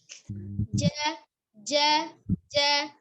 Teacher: Jimnya, ja-nya, ja, tengah lidah ada di tengah ya, langit atas